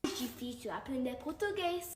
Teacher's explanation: Percebam que talvez ela não realize o R do jeito que a gente espera, né? Ou retroflexo, marcado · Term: R de português